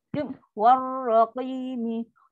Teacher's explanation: Huruf waw masuk terus pada ra. Kan ada sabdu. Sabdu kan masuk dan tekan dengan lancar. Jangan raqi. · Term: Syamsiah